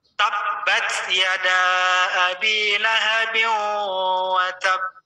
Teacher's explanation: Kalau di akhir biasanya namanya qalqalah kubro. Jadi mantulnya itu lebih besar gitu. Getarannya itu lebih besar.